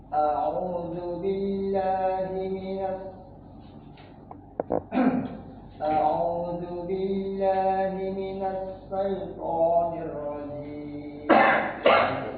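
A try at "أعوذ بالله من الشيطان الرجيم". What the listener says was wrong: Huruf shin-nya masih belum bisa ya. Jadi huruf shin begitu. Sha, shi, shu.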